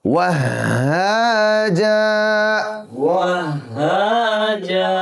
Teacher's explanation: وهاجا یاد رکھیے 2 زبر آخر میں آ جائے جہاں ہم نے جس حرف پر ہم رکیں گے تو 2 زبر والے حرف کو آخر میں ہم اس کو کھینچ کر پڑھتے ہیں. 2 زبر ایک الف کے برابر لمبا ہو جاتا ہے, ایک الف اس کو بڑھا کر کے پڑھتے ہیں.